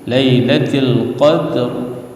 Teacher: ada getaran ra yang diwaqaf, ra yang dimatikan karena waqaf